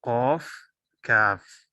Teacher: कौफ और काफ का मखरज जुबान की जड़ और लहात, यानी ऊपर का तालु जो है उसकी तरफ जुबान उठाने से ये दोनों हर्फ अदा होते हैं।